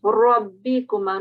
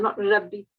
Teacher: You're not reciting the ra with the rounded mouth, which should be actually, because it's still carrying a fatha, so it will be rabbikuma, not rabbi.